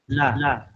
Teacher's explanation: জিহ্বার আগার কিনারা সামনের উপরের দাঁতের মাড়ির সঙ্গে লাগিয়ে লাম উচ্চারিত হয়।